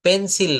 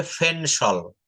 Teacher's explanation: শব্দের শুরুতে পি থাকলে পি এর উচ্চারণ প না হয়ে ফ এর মতো উচ্চারণ করতে হবে